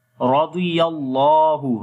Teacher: Ra we read in heavy sound, dad also in heavy sound, ya connect with the lam.